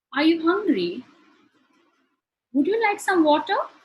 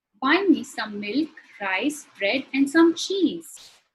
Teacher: In all three sentences, my intonation rises towards the end. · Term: rising intonation